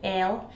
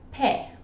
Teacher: in Dundee, the I is often said as e, and then I'll comes out as el. You can see this in this phrase here, where the word I'll has become el, and then the word pie has become pe. · the word I'll has become el, and then the word pie has become pe. This happens a lot in Dundee speech, where the vowels become sort of flatter and you open your mouth more when you say them.